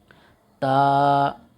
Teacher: सिरा जबान ऊपर के दांतों की जड़ से मिलकर ता अदा होता है · تا سرہ زبان، یہ سرہ ہے، سرہ زبان اوپر کے دانتوں کی جڑ سے، اندر والی جڑ سے مل کر تا ادا ہوتا ہے۔ سرہ زبان اوپر کے دانتوں کی جڑ سے مل کر تا ادا ہوتا ہے۔